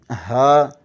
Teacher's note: ہا اقصی حلق سینے کی طرف والے حصے سے ہا ادا ہوتا ہے